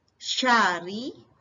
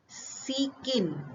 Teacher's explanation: Sya, shin itu berarti tebal ya. Yang sin itu ringan. Serta ada tasdid.